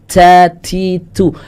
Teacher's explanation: hamsnya pasti ada keluar dikit saat huruf ta berharakat ta tu itu ada hamsnya tapi sangat sangat sedikit dan itu